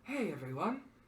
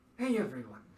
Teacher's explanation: It's kind of a breathy voice.